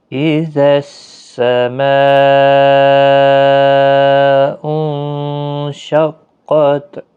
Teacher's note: اذا السماء انشقت، اذس زال نرمی کے ساتھ پڑھا جائے گا۔ یہاں پر مد متصل ہے، 4 الف کی مقدار کے برابر کھینچ کر پڑھیں گے۔ نون ساکن کے بعد شین ہے، اخفاء حقیقی ہوگا، قاف پر پڑھا جائے گا، تا ساکن ہی رہے گا وقف کی صورت۔